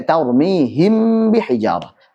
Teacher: Mim sukun ketemu ba, maka jangan sampai terlalu ditekan dua bibirnya. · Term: ikhfa syafawi